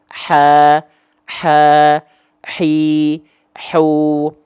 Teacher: pakai nafas bocor nafas jadinya Ha kecil